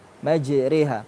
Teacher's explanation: Dia antara fathah sama kasrah. Itu tempatnya imalah.